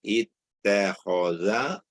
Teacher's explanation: hamzah wasal hendaklah dibaca dengan i, bukannya a ataupun u